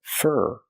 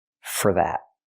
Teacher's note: We hear for pronounced as fur, because it's not a stressed word. For that. Not for that, but fur.